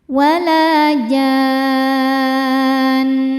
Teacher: Kemudian huruf bertasydidnya nun. Maka kita panjangkan jimnya enam. Kemudian ke nunnya kita dengungkan. tahan dengungannya. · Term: mad lazim mutsaqal kilmi